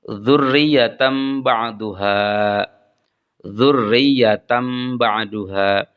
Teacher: ada tanwin fathah ketemu dengan ba maka tanwinnya diubah ke dalam huruf mim sehingga dibacanya driyatan ba'duha yang keempat adalah ikhfa ikhfa berarti menutupi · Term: iqlab